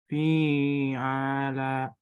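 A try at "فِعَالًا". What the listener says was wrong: Yang ainnya dibaca panjang. Fathah bertemu alif. Ulangi.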